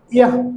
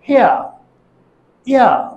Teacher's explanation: এরপর যখন ইয়া উচ্চারণ করব তখন জিহ্বাটি হাই ফ্রন্ট থেকে মিড ফ্রন্ট সেন্ট্রাল যাবে আর ঠোঁটটি আনরাউন্ডেড হবে।